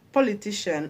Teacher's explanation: politician is stressed on TI because politician ends with IAN